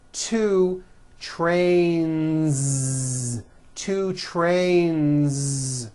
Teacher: Two trains with a voiced Z ending.